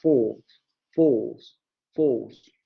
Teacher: porque la palabra force se pronuncia en inglés americano con una vocal larga